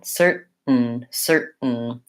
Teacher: So to go from a stopped T to a syllabic N, certain, I just close for the T, cert, it stops my voice, and then I release into the N, certain, certain.